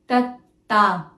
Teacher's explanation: First is tatta, non-aspirated, dental, soft sound where the tip of your tongue touches your upper teeth slightly like this